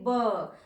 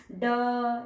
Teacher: तो जब देखिए कंठ के ऊपर में फिंगर रखिए और उच्चारण करिए ब, तो ब एक कंपन महसूस हो रहा है ना, ड एक कंपन महसूस हो रहा है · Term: वॉइस्ड कॉन्सोनेंट्स